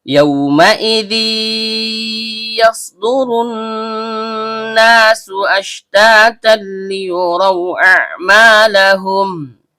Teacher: Karena dzalnya berharokat tanwin bertemu dengan huruf ya yang keluar dari tengah lidah naik memantul ke langit-langit, maka terjadi hukum bacaan idgham bi gunnah nakis. Dibaca lebur disertai dengung yang kurang sempurna dan setiap dengung keluar dari hidung.